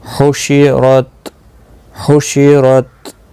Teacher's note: تا پر قلقلہ نہیں ہونا چاہیے کیونکہ حروف قلقلہ میں سے نہیں ہے